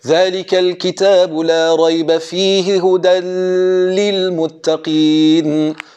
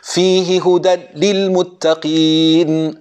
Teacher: Then we have the tanween into the lam. Some of them would do idgham bi ghunna.